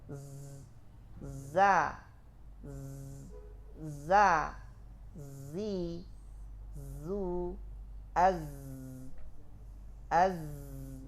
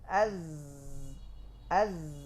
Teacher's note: Alirkan nafas pada zai berubah jadi sin. Dia mengalir suara, tertahan nafas.